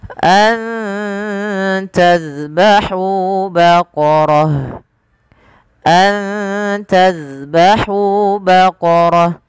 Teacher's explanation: hamzahurukum Kemudian padafal pada mim mati bertemu Hamzah ada izhar syafawi dijelaskan suara mimnya dan tidak ada penahanan